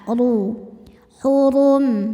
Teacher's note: Huruf ro dibunyikan secara tafkhim karena ro berbaris dommah maka dibacanya tebal. Pangkal lidah diangkat ru hurum. Dan jika berhenti di sini tetap pendek ya.